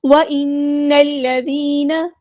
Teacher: نون پہ غنہ زمانی ہو رہا ہے، الف کے برابر ہم یہاں پہ رکیں گے